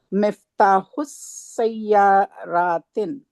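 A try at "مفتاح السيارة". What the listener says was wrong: تن نہیں ہوگا, الف لام ہے.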